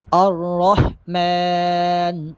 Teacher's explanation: الرحمن، میم پہ کھڑا زبر ہے، میم کو ایک الف کے برابر لمبا کر کے پڑھیں گے